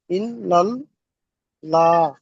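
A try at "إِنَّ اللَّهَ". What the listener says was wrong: লা হবে না, ল হবে, ইন্নাল্লাহা। লাম খাড়া জবর কি হবে? ল হবে, লাম খাড়া জবর, লাম খাড়া জবর ল হবে, ল। হ্যাঁ, কেন ল হবে? আল্লাহ শব্দের ডান দিকে কি এসছে? দেখেন, দেখে পড়েন। হ্যাঁ, যাবার এসছে, ওই জন্য করে পুর করে পড়তে হবে, অর্থাৎ মুখ গোল করে পড়তে হবে বা ল করে পড়তে হবে।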